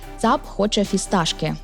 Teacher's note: тут усі приголосні глухі